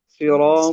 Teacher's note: اب یہاں پر صاد کو موٹا پڑھیں گے اور را کو پر پڑھیں گے، موٹا پڑھیں گے.